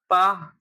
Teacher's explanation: अल्पप्राण और अघोष है।